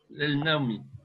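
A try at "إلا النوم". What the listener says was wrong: Mais le ila est devant un alif lam ici du alif lam de l'article. Voilà, tu vas faire la shadda. tu vas prononcer le shadda de la lettre shamsiya qui est nun. voilà, ma ana fi hajatin illa ila naomi.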